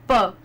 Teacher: it's a labial sound, वो होठों के आपस में संपर्क से प्रोड्यूस की जाती है